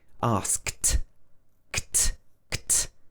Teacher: the ED at the end of this word is pronounced t. It's not pronounced d.